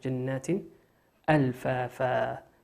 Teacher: تنوين بعده همزة، والهمزة من حروف الإظهار، نظهرها كما هي